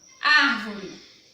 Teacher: Na palavrinha árvore, a sílaba mais forte da palavra é o ar. Ar, tá? Essa palavra ela é considerada proparoxítona, porque a sílaba mais forte dessa palavra é a antepenúltima.